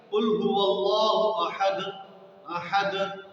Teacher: ये जो अहद का दाल आखिर में आ रहा है और साकिन है, तो इसमें हल्की सी जुम्बिश और हरकत आएगी। कुल हुवल्लाहु अहद, अहद, तो इसमें जो हल्की सी जुम्बिश आ रही है, इसको कलकला कहा जाता है।